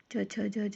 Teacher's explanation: च छ ज ज न, उसे हम तालुव्य कहते हैं